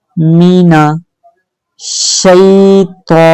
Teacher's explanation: शीन पर तशदीद है, ठीक है, तो मोटा हरफ है, इसको मोटी आवाज में पढ़ेंगे